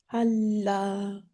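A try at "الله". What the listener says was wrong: I did not hear your ha very well. I didn't feel the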